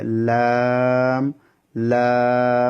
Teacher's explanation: জিহ্বার আগার কিনারা সামনের উপরের দাঁতের মাটির সঙ্গে লাগিয়ে লাম লাম জিহ্বার আগাটা সামনের উপর দাঁতের মাটির সঙ্গে লাগবে